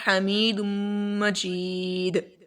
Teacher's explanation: دال کے اوپر قلقلہ ہوگا کیونکہ وقف کی صورت میں ہم اس کو ساکن کر دیتے ہیں